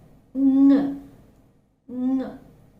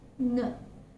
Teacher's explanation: And when articulating this sound, the back part of the tongue is making a very firm contact against the soft palate. Okay, and the air is passing through the nose and mouth. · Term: voiced velar nasal